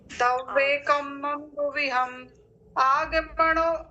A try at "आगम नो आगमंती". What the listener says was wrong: नहीं, अलग से बोलो तब बनेगा। उसमें नो आगमंती बस बोल लो। नो आगमंती, ठीक है। मंती बस उल्टा हो गया, ती पहले हो गया, मम बाद में चला गया है।